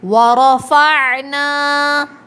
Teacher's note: ورفعنا، را کو موٹا پڑھیں گے، را کے اوپر زبر ہے، عین حلق کے درمیان سے ادا ہوگا، نون کے بعد الف مدہ ہے۔